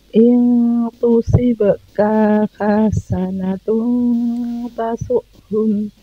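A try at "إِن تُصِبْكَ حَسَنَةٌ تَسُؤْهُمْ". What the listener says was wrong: ini juga ya tusibka juga ya sedikit keseret ya k-nya.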